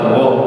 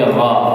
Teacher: ketika fathah bibir tidak monyong dan tidak tertutup bukan ro, tapi ra.